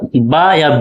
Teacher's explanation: दोनों का तलफ़ुज़ देखिएगा दोस्तों होंठ से हो रहा है, दोनों होंठ है ना मिलने से